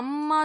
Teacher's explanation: மீம் வந்து பார்க்கும் பொழுது, நம்ம வந்து அந்த மூக்கின் நுனி பகுதியிலிருந்து சத்தமும் வரணும். அதே நேரத்தில 2 உதடுகளும் ஒட்டுன நிலையில அது வரணும்.